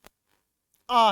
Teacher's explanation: अधिक वायु बाहर निकलेगी, तो मुख है वो सर्वाधिक खुला रहेगा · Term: विवृत